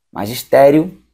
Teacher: Tá no I, sobe pro O, de tom crescente.